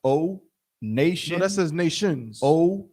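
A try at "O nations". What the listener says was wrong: No, that says nations. No, that says nations with an S. I think you're forgetting the S where it talks about all the people on earth.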